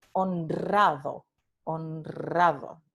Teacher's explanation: Tenemos n nasal y la múltiple que ocurre después de una nasal, entonces es múltiple